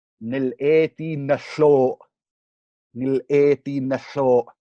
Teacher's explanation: this is a type of wordplay using this repeated phonological structure, N lateral aleph, N lateral aleph